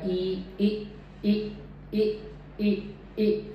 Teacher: ई sound जो मेरी है वो उसमें मेरे जो लिप हैं वो रिलैक्स रहेंगे, थोड़े से बाहर की ओर स्ट्रेच रहेंगे और जो माउथ की ओपनिंग कम हो जाएगी